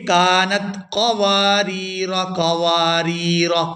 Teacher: جب ہم یہاں پر وقف نہیں کریں گے تو پھر الف مدہ یہاں پر نہیں پڑھا جائے گا، یہاں را کو ہم پھر کھینچ کے ادا نہیں کریں گے۔ اگر ہم یہاں پر وقف کرتے ہیں پھر ہم را کو 1 سے 2 سیکنڈ کھینچ کر ادا کریں گے، کیونکہ یہاں الف مدہ ہے وقف کی صورت میں۔